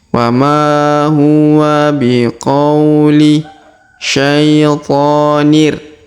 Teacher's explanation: Huruf qa diayun sekali karena di depannya terdapat waw sukun.